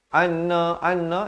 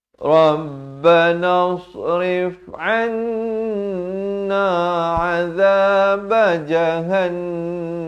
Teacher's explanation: Ramai yang baca anna itu tak betul. Mestilah dengung dua harakat di sini. Hukumnya wajibul qunnah. Wajib dengung kadar panjang dua harakat.